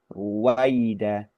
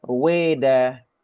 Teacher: usahakan untuk baca vokal A dengan utuh dan selanjutnya langsung ke vokal I yang juga utuh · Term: vokal A dan I